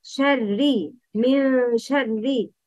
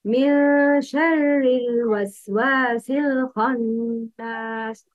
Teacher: Pronounce sheen and ra with a light tone.